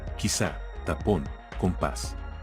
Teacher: Palabras agudas. Son las palabras que llevan la mayor fuerza de voz en la última sílaba, llevan tilde las terminadas en n, s o vocal.